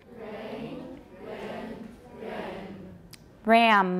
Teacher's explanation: In each case, the air is prevented from going out through the mouth, but is able to go out through the nose because the soft palate or velum is lowered.